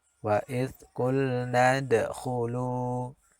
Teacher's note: Pada bacaan qulna di situ ada dal sukun. Maka ini namanya qalqalah sughra karena terletak di tengah kalimat. Maka bacaannya pantulannya kecil.